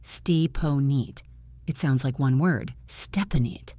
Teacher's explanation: The P connects to the O and the N connects to the I.